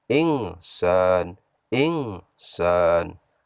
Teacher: Baiklah anak-anak, masih dalam kata al-insan, insan, di sana ada huruf nun mati atau nun sukun bertemu dengan salah satu huruf ikhfa. Dibaca samar-samar panjang 2 harakat.